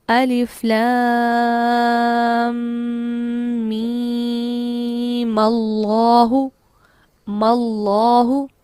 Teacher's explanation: اگر میں پہلی اور دوسری آیت کو ملا کے پڑھنا چاہوں گی تو اس میم پر زبر لگا دی جائے گی، اور یہ کیسے پڑھا جائے گا ملا کر، الف لام میم اللہ ماللہ، ٹھیک ہے، اس کو زبر لگا دی جائے گی۔ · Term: فتحہ دینا